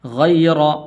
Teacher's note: را کے اوپر زبر ہے تو اس لیے اس کو پر کر کے پڑھنے ہیں